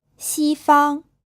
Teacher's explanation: this word is pronounced with two first tones